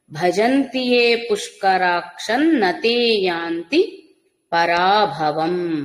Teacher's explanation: భజంతియే పుష్కరాక్షన్ అనుస్వారం నకారం అవుతుంది